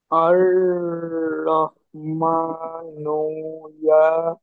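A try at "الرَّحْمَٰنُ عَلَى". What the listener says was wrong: ইয়া না, আইন জবর কি পড়েছেন? আ পড়েছেন তাই না, তাহলে ইয়া না, আইন জবর আ।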